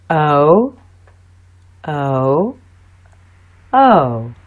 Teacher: teeth move from the o sound to the uh sound quickly you will find that you move from a more open position to a more closed position as you make the sound your lips are rounded for this sound o o o here's o in the beginning of some words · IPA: /əʊ/